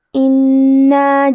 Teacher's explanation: کلمت انا میں حرف نون پہ تشدید ہے، لہذا ہمیں نون کو 2 حرف کے برابر پڑھنا ہے کیونکہ تشدید کی اصلیت 2 حرف ہے. جیسا کہ یہاں حرف نون ہے تو یہ 2 نون ہیں، نون ساکن اور نون متحرک.